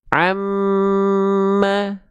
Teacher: Dia punya dengung gunah. Makanya ketika mim bertasdid juga dia bukan cuman tekan tapi tahan dua harakat.